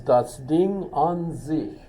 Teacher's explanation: Get the sich, do that kind of fricative there to sound not like a California girl, but a German